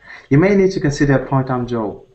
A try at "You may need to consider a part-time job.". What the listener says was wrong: You may need to consider. Oh, it just sounds like you kind of muffled these words together. So consider a part-time job.